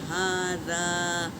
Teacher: اور ہا کے اوپر کھڑا زبر ہے تو 1 الف کی مقدار کھینچیں گے اور سینے سے نکالیں گے، اور دال کو دونوں دانتوں کے بیچ میں زبان ڈال کر، ٹپس ڈال کر ادا کریں گے